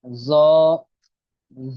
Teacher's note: ذو کو تھوڑا سا موٹا کریں گے، حروف مستعلیہ میں سے نا